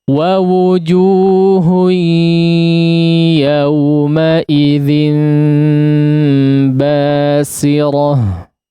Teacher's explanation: Baik, ada basir ya, udah pakai shad, ada sin ya, pakai sin ya. Di sini diperhatikan sinnya jangan menjadi shad ya.